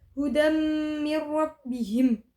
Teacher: selanjutnya pada lafaz hudam bihim terdapat hukum bacaan Idgham bunah yaitu Dal berharakat fathatain bertemu dengan mim cara membacanya adalah memasukkan dengan mendengung